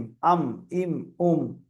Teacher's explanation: যেহেতু মিমের উচ্চারণ ঠোঁট থেকেই হয়, আমরা জানি দুই ঠোঁটের ভিজে অংশ থেকে উচ্চারণ হয় মিম, আম, ইম, উম।